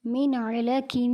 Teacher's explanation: نون ساکن کے بعد عین حروف ہلکی میں سے ہے، اسی لیے یہاں پر غنہ نہیں ہوگا